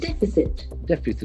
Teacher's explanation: Deficit, accent on the first, so the first syllable.